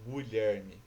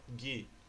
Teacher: na palavra Guilherme, você não pronuncia o U. Você não fala Guilherme, você fala Gui.